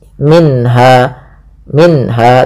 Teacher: Kemudian pelafal minha ada bacaan izhar halqi yaitu suara nunnya dibaca dengan jelas. Minha minha tidak boleh minha langsung saja.